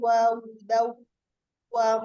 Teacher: ada fathah tanwin bertemu dengan waw, dibaca ahkam tajwidnya idgham bilghunah, dilebur disertai gunah.